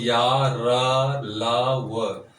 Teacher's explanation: सटने का प्रयास तो हो रहा है लेकिन पूर्णतः स्पर्श नहीं हो रहा है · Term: अंतस्थ व्यंजन